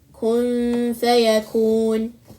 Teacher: The upper two teeth lightly touch the lower lip while emitting the gunna, then pronounce the letter Fa. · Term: Ikhfaa